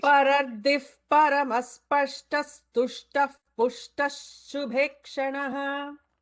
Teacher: So after the first visarga, it should be an F. After the second visarga, it should be an S. After the third visarga, it should be an F.